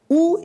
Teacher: Phonetically, u is a close back rounded vowel. It is produced by raising the back of the tongue close to the soft palate velum without creating any obstruction to the airflow. The lips are rounded and produce, forming a small circular opening.